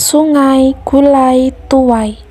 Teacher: Dapat kita lihat terjadi perubahan kualitas vokal dari vokal rendah tengah tak bundar menjadi vokal tinggi depan tak bundar i. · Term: diftong ai